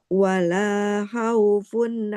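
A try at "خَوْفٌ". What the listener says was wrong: Enggak khauf. Tapi khauf ya, huruf kho nggak boleh dibaca ha. khauf. Nah, khaufun.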